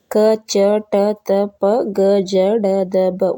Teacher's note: ಇವಕ ಉಚ್ಚಾರ ಮಾಡಕೆ ಕಡಿಮೆ ಉಸಿರಬೇಕು ಅದಕ್ಕ ಅಲ್ಪಪ್ರಾಣಗಳು ಅಂತಾರ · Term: ಅಲ್ಪಪ್ರಾಣ ಅಕ್ಷರಗಳು